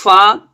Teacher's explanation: فا دونوں ہونٹوں کے بیچ سے تھوڑی ہوا کی آواز آئے وہ فا ادا ہوتا ہے